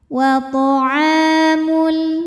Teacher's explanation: Wa ta'a, hukumnya adalah mad tabi'i dhahiri. Sebab ada alif didahului baris fathah, maka dibacanya panjang ainnya 2 harokat.